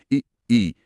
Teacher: जीभ का अगला हिस्सा, मतलब नोक के पास वाला हिस्सा ज्यादा सक्रिय है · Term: अग्र स्वर